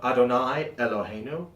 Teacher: Adonai elohenu a little glottal stop